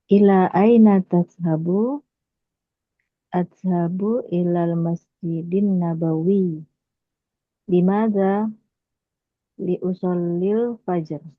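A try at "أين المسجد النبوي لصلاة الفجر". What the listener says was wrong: Sip. Bagus. Betul.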